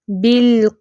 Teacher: नहीं हिलाना कैसे नहीं पढ़ना बिल किती नहीं ऐसे नहीं पढ़ेंगे लाम पर भी हिलाना नहीं उसको कल कला नहीं बनाना